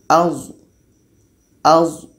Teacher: Ini kita bantu lagi dengan alif. Za ini letaknya pada ujung lidah, menempel dengan ujung gigi seri atas.